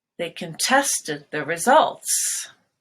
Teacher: So there the stress is on test.